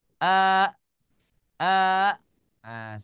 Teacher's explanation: ketika hamzahnya menjadi sukun maka dipotong atau dicut suaranya ya karena kita mensukunkan Hamzah ja a a ahah seperti itu